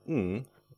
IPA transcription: ŋ